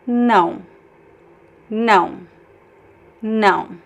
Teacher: It's okay to make the last vowel nasal as well.